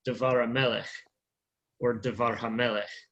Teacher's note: But the accent is on the meh on Melech. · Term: stressed as one word